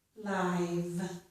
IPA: laɪv